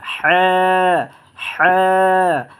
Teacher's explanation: এই হা হরফটা উচ্চারণ হয় আপনার গলার মধ্যখান, মাঝখান থেকে এইভাবে হ্যাঁ।